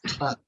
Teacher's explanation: in a word like truck, ta sounds becomes aspirated, it becomes truck